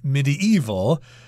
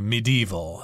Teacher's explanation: some people say medieval which is four syllables medieval but I tend to kind of scrunch those two syllables together and just say medieval three syllables